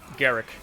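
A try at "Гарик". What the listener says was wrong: It's with like a softer R,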